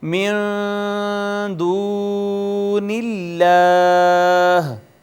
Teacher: اس میں جلالت کا ما قبل مکسور ہے، لہٰذا اس کو باریک پڑھیں گے، اور یہ واو مدہ ہے اس وجہ سے کہ ما قبل اس کا مضموم ہے۔ · اس میں جلالت اللہ کو باریک پڑھتے ہوئے اس کے اوپر کھڑی زبر ہے جس کو ہم الف المدیہ صغیرہ کہتے ہیں، تو اس کو بھی ایک الف کے برابر ہم کھینچیں گے